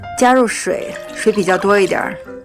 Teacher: 这里的一点儿就是最典型的儿化音